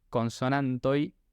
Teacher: Entonces, en este caso, si vemos la palabra que tenemos arriba, consonantoi, se pronuncia así porque justamente no es consonantoj, es consonantoi. Tiene esa cadencia de una I diptongada que no es la I propiamente dicha, pero es un sonido muy parecido.